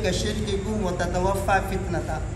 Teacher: کاف اور تا کے اندر جو شدت ہے، صفت شدت ہے، ہاں کہیں ایسے نہ ہو کہ اس صفت شدت کو آپ ختم کر دیں